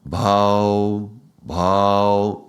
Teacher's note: The vowels of Ao, Ao are very expansive and opening.